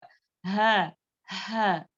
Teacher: अक्सल हलक, यानी कि हमारे सीने के करीब से अदा होता है